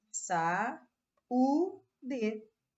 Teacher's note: vogal vogal ficaram separadas cada uma numa sílaba diferente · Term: iato